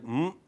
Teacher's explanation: say voiced, then it's bilabial and then nasal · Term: nasal sound m